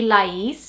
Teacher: It definitely wouldn't be Lais, which is the way that we say it, especially because we have the accent on the I, so the inflection is on the second part